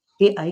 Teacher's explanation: कंठ और तालु के द्वारा ए आई का उच्चारण होता है।